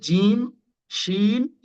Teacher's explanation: জিহ্বার মাঝ, জিহ্বার মধ্যখান এবং ওই বরাবর উপরের তালু, সেখান থেকে উচ্চারণ হবে তিনটা অক্ষর, সেটা হচ্ছে জিম, শিন, ইয়া।